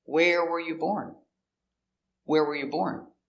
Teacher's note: The question word, where, is important, so stress where.